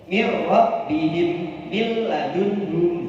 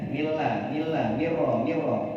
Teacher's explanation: Ketika bertemu lam ra dibaca memasukkan dengan tidak dengung.